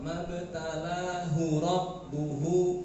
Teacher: Hu yang kedua, ketiga, keempat panjang. Dua harokat.